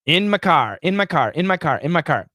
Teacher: but in daily conversation oh we reduce it we reduce the vowel and my can actually be reduced to a schwa